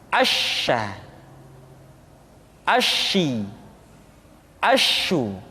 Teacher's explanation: Dan sifat yang dimiliki oleh huruf sya yang paling nampak adalah apa yang disebut dengan sifat at-tafashi, yaitu menyebarnya angin di dalam mulut kita.